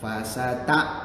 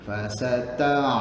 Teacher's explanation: ingat ain tu daripada tenggorokan, bukan daripada mulut